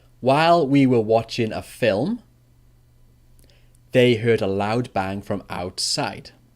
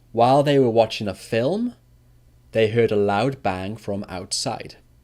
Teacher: the past continuous for an interrupted action actually goes down twice so it goes down twice before the comma